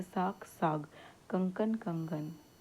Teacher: जब अघोष ध्वनियाँ घोष ध्वनि में परिवर्तित हो जाती है तो घोषीकरण कहा जाता है